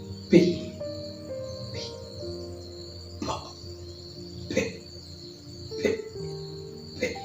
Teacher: there is no voice there is no vibration in your throat whenever you are going to say that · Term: Uno